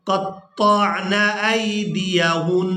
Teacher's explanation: یہاں پر وقف کی صورت میں بھی غنہ ہوگا